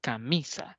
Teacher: pronuncia con mayor volumen de voz por ejemplo la palabra camisa de las tres sílabas que componen la palabra camisa mi va a ser la sílaba tónica